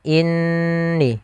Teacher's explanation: kita menahan suara ghunahnya sepanjang dua harakat Maka inni jangan langsung inni nah kesalahan yang banyak terjadi adalah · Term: Nun bertasydid